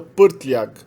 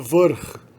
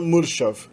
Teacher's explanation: Meramente coloca-se o R e a gente já sabe que esse R é o núcleo da sílaba.